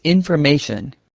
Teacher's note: In the word information, we stress ma.